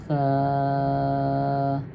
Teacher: ان ثا میں سیٹی کی آواز نہیں آنی چاہیے۔ یہ زبان کی سریں جب دانتوں کے اوپر والے دانتوں کی سروں سے لگ جائے تو یہ وہاں سے ادا ہوتا ہے، تو اس میں سیٹی کی آواز نہیں آنی چاہیے۔